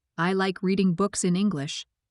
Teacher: the strong words are like, books and English. The other words are weaker. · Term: sentence stress